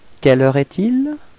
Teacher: as it's a question, it would be better to raise your voice at the end of the sentence, so it would sound like quelle heure est-il?